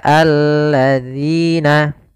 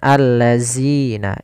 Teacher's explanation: Kemudian sahabat Quran, hati-hati di dalam pelafalan zalnya. Zal di sini agar dia terbaca dengan baik, itu dengan ujung lidah kita menempelkan dengan gigi sari atas.